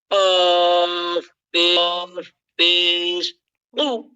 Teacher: গলা জিহ্বার গোড়াটা ড্রপ দিয়া, এরকম ড্রপ দিয়ে তারপরে কফ উচ্চারণ করবেন। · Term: মোটা হরফ